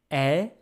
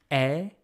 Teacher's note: see from my mouth it's an open sound. E like my mouth is wide open. E. Because m the e sound is followed by a consonant that's empty in a way m there's no strong vo after the m to fill it.